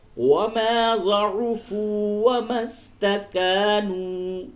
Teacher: فی سبیل اللہ وما ضعفوا وما استکانوا. یہ دونوں واو مدہ ہے، دونوں کو کھینچیں گے